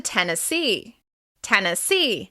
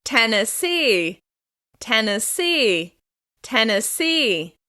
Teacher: As you can hear, the stress is on the final syllable of this word.